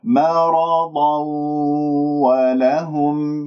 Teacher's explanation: هنا حكم تنوين مع الواو إدغام بغنة، لأنه الواو من أحرف ينمو.